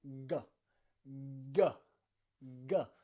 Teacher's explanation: This is a little bit more difficult because here, the back of your tongue is going up to the back and roof of your mouth, the top of your mouth, and it's blocking the air from coming out. You're vibrating your vocal cords like this, and then release, g, g, g.